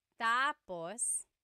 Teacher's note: When the emphasis is on the first syllable, tapos, then it means next.